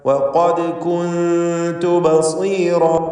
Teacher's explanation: ദാലിൻ്റെ സുക്കൂൻ ഖൽഖല സുഗ്റ നൽകി ശബ്ദം ഹറക്കത്ത് പോലെ ചലിപ്പിക്കേണ്ടതാണ്.